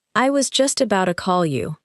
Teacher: In relaxed speech, about to may sound like about a.